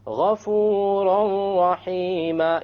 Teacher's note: You don't hear an N sound because you drop it.